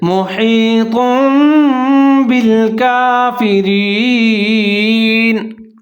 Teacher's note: یہاں پر ہے محیط، تو کے اوپر دو پیش ہے تو دو پیش کی آواز کو میم کے ساتھ تبدیل کیا جا رہا ہے اور ساتھ میں غنہ بھی کیا جا رہا ہے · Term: اقلاب